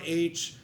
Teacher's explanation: it gives a breathy onset to the word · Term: aspirate h